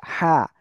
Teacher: হা গলাটা চেপে পড়তে হবে